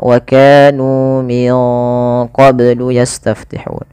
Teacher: Nah, ini nunnya disamarkan ke huruf qaf karena dia ada bacaan ikhfa. Di sini ikhfanya ikhfa ab'ad, ikhfa yang jauh, ya, yang jauh daripada makhraj, daripada huruf nun.